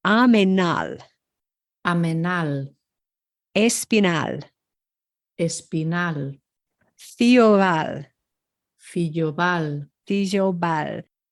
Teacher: And I picked these because in most of these words, unless it's noted, the accent falls on the final syllable, which is not intuitive for English speakers